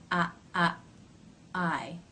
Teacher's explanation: It's similar to the a as in bat in that the back of the tongue raises towards the soft palate, but it doesn't raise as high as it does in the a as in bat vowel